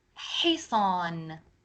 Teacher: hisan, So it's not ha sound, it's ha from the throat. It's not like the English ha sound in the word house